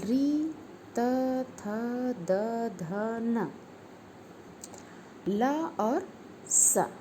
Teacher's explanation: यह सभी दंत से यानी दांत से उच्चरित होते हैं। इसको सूत्र में बांधा गया है ऋतु लसानाम दंताः।